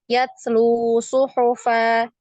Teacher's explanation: tetap dibaca dua ketukan karena ada dhammah bertemu dengan waw sukun di situ ya